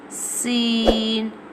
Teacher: Scene pronounced from the tip of the tongue touching the inner eds of the top two and bottom two front teeth